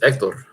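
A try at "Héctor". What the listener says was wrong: It's like almost no H, Hector.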